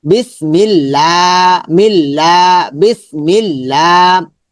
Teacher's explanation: জের থাকলে পাতলা হবে, পাতলা হলে লা হবে, লিল্লাহ হবে।